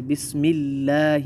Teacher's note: جیسے بسم اللہ، ملہ، لفظ جلالہ سے پہلے کسرہ ہے، زیر ہے، اس کو باریک پڑھیں گے